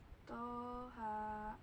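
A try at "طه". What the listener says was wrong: Ya, jangan terlalu lama.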